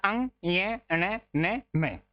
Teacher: ध्यान रखिएगा इनका उच्चारण पांचों का नाक से होता है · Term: नासिके